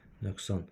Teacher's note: Nöqsan sözü özündən sonra kar samit gəldiyinə görə S kar samiti. Söz ortasında Q K kimi tələffüz olunacaq.